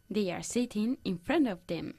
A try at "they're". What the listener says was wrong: Intenta pronunciar las dos palabras they are, la contracción there, no there. There, there. Sacando la lengua. Th, th.